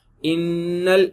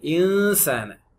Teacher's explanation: இன்ன இஸ் குன்னா, இன்சான் is இஹ்ஃபா. இதான் difference. இன்னல நாக்கு டச் பண்ணது, இன்சால நாக்கு டச் பண்ணல.